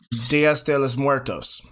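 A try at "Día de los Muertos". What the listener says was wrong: No, you added a bunch of S's. It's Dia de los Muertos.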